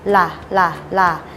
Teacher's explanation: ให้กระดกปลายลิ้นแตะบริเวณฐานฟันบน